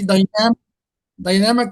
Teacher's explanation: The stress lies on the second syllable.